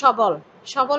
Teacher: এই সবলের বর অটা অই রয়ে গিয়েছে, অবিকৃত, কোনো ওকার হয় নাই